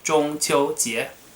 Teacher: 中 first tone 秋 first tone 节 second tone